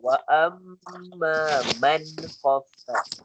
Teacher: nun mati bertemu kha izhar halki kita jelaskan